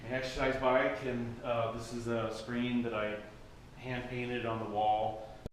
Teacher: notem como ele não tá pronunciando, não tá aspirando as sílabas duras na fala normal. Por exemplo, and torna-se an, ou hand-painted torna-se hand-painted.